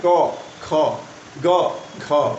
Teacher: इसमें क्या हो रहा है, क बोल रहे हैं तो हमारा कम समय लग रहा है ना उसमें बोलने में। क, ख जैसे ही बोल रहे हैं तो हमारा सांस जो है ज़्यादा निकल रहा है बाहर। ग में नहीं निकल रहा है। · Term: महाप्राण